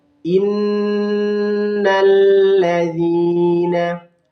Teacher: ada nun yang bertasydid disebut dengan bacaan gunnah dengan cara bacanya dilamakan